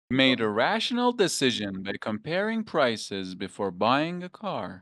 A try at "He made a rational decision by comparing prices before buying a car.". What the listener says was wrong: But can you try to go low at the end? Comparing prices. He made a rational decision by comparing prices. Before buying a car. You can say buying a car if you want, but I'm just practicing finishing low. Buying a car.